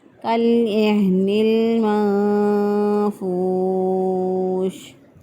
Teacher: ہا جو ہے اس کی ادائیگی کی جو جگہ ہے وہ ہے اقصی حلق سے ہا ادا ہوتا ہے،